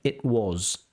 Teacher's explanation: the T becomes something called a glottal stop